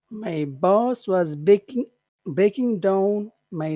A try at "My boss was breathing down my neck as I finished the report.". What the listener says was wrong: Breathe, breathing, not breaking, breathing, breathing.